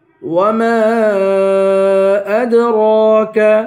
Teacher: وما کو 3 الف کی مقدار کھینچ کر پڑھیں گے.